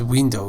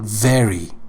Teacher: sound of V or Vav in Farsi is not bilabial, but it is labial dental. It means that it is articulated with the help of the touch of the let me see V, the lower lip against the upper lip, the upper teeth.